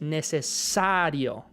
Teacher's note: en español la sílaba tónica es necesario, ¿verdad? La énfasis va en esa A.